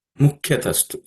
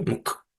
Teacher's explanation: Ka is the second letter in the Ka Varga, so it has to also be aspirated.